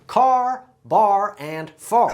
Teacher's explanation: It's also a little bit nasal and has what we call a rhotic R.